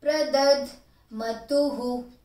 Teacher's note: Ma is full, last two short, after two there is visarga